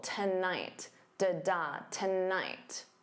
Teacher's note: So notice that syllable stress, the first syllable is unstressed, so to becomes that unstressed ta, and then night is your stressed syllable